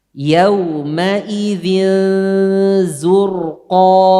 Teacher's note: Tipiskan zai sebelum ro tebal. Jangan zur, jangan zo, zu.